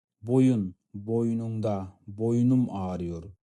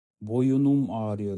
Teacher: Яғни соңғы буындағы дауысты дыбысымыз қысаң дауысты дыбыс болатын болса, и, у, болатын болса, сол сөзге дауысты дыбыспен басталатын бір жалғау жалғанғанда соңғы буындағы қысаң дауысты дыбыс түсіп қалады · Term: ünlü düşmesi